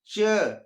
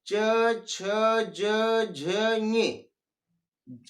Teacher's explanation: इसके बाद च वर्ग आपका है, तो च वर्ग जो होता है वह तालव्य, तालु से बोला जाता है। जैसे च, जीभ आपकी तलवे में टकरा रही है